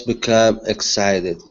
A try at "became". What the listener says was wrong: This is a long A sound instead of become. Aim, became.